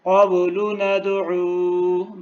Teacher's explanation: با کے اوپر بھی قلقلہ ہے اور دال کے اوپر بھی